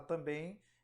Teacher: na palavra também e a letra e funcionou como vogal e a letra m ela tem um som vocalizado e funciona portanto nessa palavra como semivogal